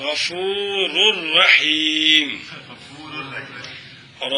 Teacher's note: نون تنوین کو را کریں گے، را کا را میں دعام کریں گے اور بغیر غنے کے کریں گے